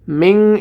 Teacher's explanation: মিন এখানে গুণনা হবে, কারণ নুন সাকিনের পরে ইখফার হরফ তা এসেছে